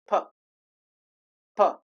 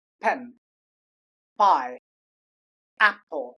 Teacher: First of all, you stop the air, then you release it.